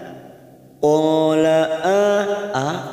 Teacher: ada fathah yang diikuti Alif dua harakat kita panjangkan